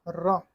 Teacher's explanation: ये वर्ष लुंठित है, सघोष है, अल्पप्राण व्यंजन है। वर्ष ध्वनि होता है दंतों और मसूड़ों से मिलने का स्थान अर्थात दंत को वर्ष ध्वनि कहते हैं।